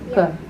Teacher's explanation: So k, it's at the back of the tongue.